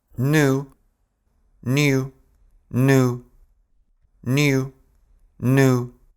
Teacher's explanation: А вот в американском акценте «йод» выпадает. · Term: yard dropping